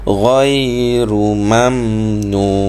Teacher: Gha disebut tebal. Gha disebut tebal sebab dia ada huruf isti'la.